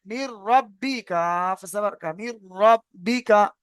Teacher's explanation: এই লাম আর এই র, দেখেছেন এইখানে এসেছে, র আর এই লাম, এই দুইটি অক্ষর যদি আসে তাহলে ঈদগামে পা গুন্না, না ঈদগামে বেলা গুন্না, মানে এখানে গুন্না হবে না, শুধুমাত্র মিলিয়ে পড়তে হবে। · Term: ঈদগামে তাম